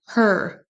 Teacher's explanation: on prononce bien le H en début de mot her. Et ensuite, on traîne sur le E. Et le R, on l'entend à peine.